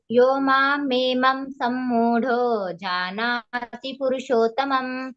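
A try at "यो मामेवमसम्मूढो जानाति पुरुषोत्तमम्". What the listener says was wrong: ಯೋ ಮಾಮೇವಮಸಮ್ಮೂಢಲ್ಲಿ ಮೇವಮಸಂ ಅಂತೇಳಿ ಬರ್ಬೇಕು. ಯೋ ಮಾಮೇವಮಸಮ್ಮೂಢೋ ಮಾ ಬರ್ಬೇಕಲ್ಲಿ. ಕೊಟ್ರೆ ನೀವು ಅಸಮ್ಮೂಢ ಅಂತ ಹೇಳ್ಬೇಕಾಗ್ತದೆ. ಯೋ ಮಾಮೇವಮಸಮ್ಮೂಢೋ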